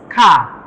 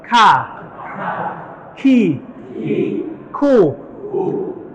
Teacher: Adalah pengucapan huruf yang dia diiringi dengan keluar nafas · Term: al-hamsu